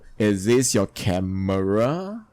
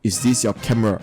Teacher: if you were to use a falling intonation it will sound pretty odd is this your camera it sounds more forceful and perhaps unnecessary